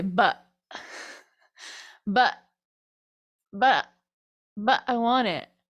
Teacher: A lot of times in American English we say but, but, but, but I want it. We do that a lot when we're replacing T's with things. We do a glottal instead of a T. We don't do but I want it, but I want it.